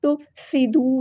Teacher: سین میں سیٹی آنی چاہیے